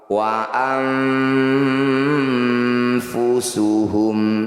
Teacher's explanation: Nun sukun bertemu fa disebut bacaan ikhfa awsat. Cara bacanya bunyi nun sukun dengungkan 2 harokat. Ketika dengung lisan kita sudah bersiap di huruf fa.